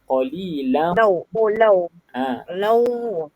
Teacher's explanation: la tu jangan panjang mat, dia panjang dengung.